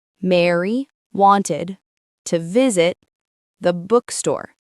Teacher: If you clap on each stressed syllable, you clap on may, wan, vi, book. The rest of the syllables slide in between the claps. · They slide in quickly. The rhythm feels like strong, weak, weak, strong, weak, strong.